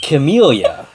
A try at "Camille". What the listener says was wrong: He doesn't know how to pronounce words. He's pronouncing the E.